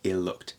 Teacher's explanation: no t no glottal stop